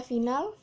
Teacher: Pada kata final, bunyi F mati, oral, labiodental, dan frikatif